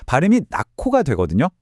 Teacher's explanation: 받침 히읗이랑 뒤에 오는 기억이 만나서 둘이 합체해서 아예 하나의 새로운 소리, 더 거센 소리인 크로 업그레이드되는 현상입니다. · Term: 거센 소리 되기